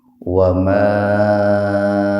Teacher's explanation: Wa ma'a mad jaiz munfasil. Mad tabi'i alif bertemu hamzah secara terpisah atau di lain kata. Jadi dibacanya lebih panjang dari mad tabi'i, sekitar 4 atau 6 ketukan.